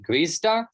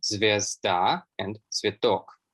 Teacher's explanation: clusters kv, gv are conserved, which is also a common development with East Slavic.